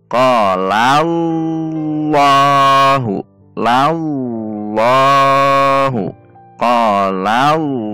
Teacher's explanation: pangkal lidah dinaikkan ke atas sehingga terdengar bunyi yang tebal. Saat pangkal lidah dinaikkan ke atas, tidak mungkin kita mampu menyebutkan huruf A, pasti terdengar O, padahal bukan O sebetulnya, namun karena tebal.